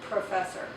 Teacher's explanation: when you say professor, you produce quite a puff of air that comes out, okay? That's an aspirated P, professor.